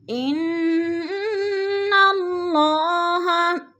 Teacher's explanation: واتقوا اللہ، اللہ پر پڑھا جائے گا، اللہ سے پہلے لفظ قاف کے اوپر پیش ہے تو اللہ کو پر کر کے پڑھیں گے۔ ان اللہ، انہ کی نون مشدد ہے، سختی سے جما کر پڑھیں گے اور اللہ بھی پر پڑھا جائے گا۔